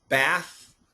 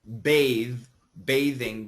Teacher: bath no vibration bathe bathing vibration